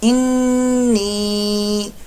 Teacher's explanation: इन्नी नून शद्द का गुन्ना हो रहा है और साथ में या मद्दा है, इसको हम लंबा भी करेंगे।